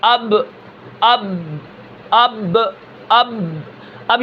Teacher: میرے ہونٹ مل گئے تو یہ اس کا مخرج ہے